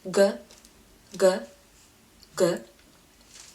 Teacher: it's a bit more tense than English G